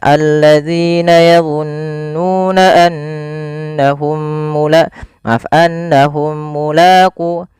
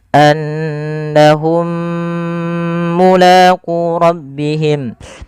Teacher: Harusnya ditahan dulu untuk menyempurnakan mimnya. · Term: idgham mimi